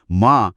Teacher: मा म्हणजे M A हा ध्वनी ओठ बंद करून येतो